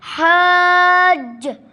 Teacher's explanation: حا ادا ہوتا ہے گلے کے درمیان سے